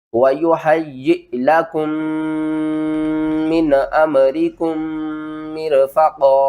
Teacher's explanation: میم ساکن کے بعد میم مشدد ہے تو یہاں پر ہم کیا کریں گے ادغام شفوی کریں گے یہاں پر ادغام کریں گے گننے کے ساتھ